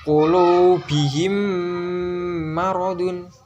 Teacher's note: Ada mim sukun bertemu dengan mim. Cara bacanya berarti dengung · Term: idgham mimi